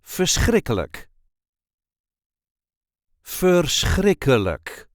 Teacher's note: there is a light emphasis on the second syllable